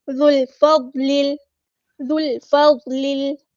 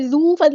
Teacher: باریک light letter ہے، ہم نے ذو فضل نہیں پڑھنا، ذل ذال کو ہم نے فوراً لام کے ساتھ ملا دینا ہے، حمزۃ الوصل ہمارا ڈراپ ہو جائے گا